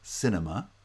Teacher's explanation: cinema has stress on the first syllable only the second and third syllables both have vowel reduction because they're unstressed syllables